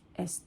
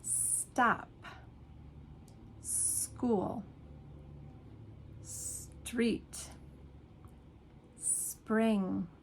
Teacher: Spanish speakers automatically put an e in front of it.